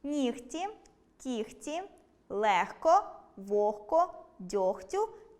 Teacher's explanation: оглушення відбувається у словах “нігті”, “кігті”, “легко”, “вогко”, “дьогтю” та похідних від них. У вимові цих слів чуємо звук [х].